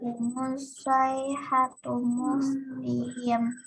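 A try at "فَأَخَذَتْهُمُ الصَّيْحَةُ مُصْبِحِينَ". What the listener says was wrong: Kurang panjang. Musbihin. Setiap nih yang akhir-akhir ayat kayak gini nih, ya sukun ketemu apa aja tahu sukun. Akhirnya yang itu harus dibaca panjangnya 3 alif atau 6 harokat.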